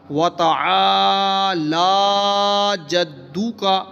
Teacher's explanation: لام کے اوپر کھڑا زبر ہے، اس کو بھی لمبا کرنا ہے